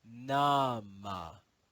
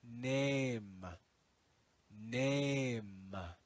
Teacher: the final schwa was dropped and ignored the long ah changed to make the sound a